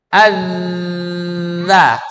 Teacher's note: huruf zal itu suaranya ketika dilafazkan harus mengalir. Kapan? Ketika huruf zalnya dalam keadaan sakinah atau sukun.